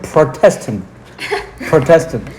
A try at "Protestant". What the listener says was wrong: No, you don't say it as if you're saying protest because you change the pronunciation a little bit. Protestant, like prod. Protestant. Protestant. Protestant.